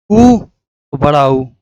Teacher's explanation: तालब्य ई, बड़ी, मूर्धन्य री, ओष्ठ ऊ, बड़ा ऊ। ऊ बोलते हैं तो हमारा होंठ जो है गोल आकार में हो जाता है।